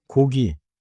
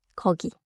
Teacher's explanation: Round for 고기, loose for 거기.